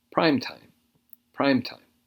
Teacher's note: it has a broader meaning now this is a noun and the stress is on the first word